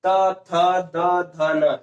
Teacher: इनको बोलने में हमारी जीभ जो है दंत पे स्पर्श कर रही है, क्या हो रहा है, इनका उच्चारण दंत से हो रहा है। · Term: त वर्ग